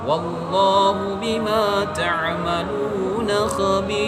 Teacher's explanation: Huruf waw berbaris fathah, maka lamnya dibaca dengan tebal.